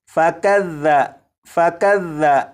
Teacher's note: یہاں پر دیکھیں یہ جو لفظ ہے، اس لفظ میں یہاں پر ذال ہے، ذال کو نرمی سے پڑھیں گے، یعنی سی ٹی کی آواز کے بغیر پڑھیں گے